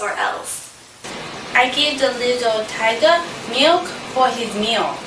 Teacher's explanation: she would use vowels like o instead of some r's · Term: vowelization